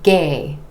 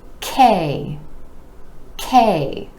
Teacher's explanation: the consonant is an air puff sound meaning it's made with a tiny puff of air and you want to make sure that k gets the puff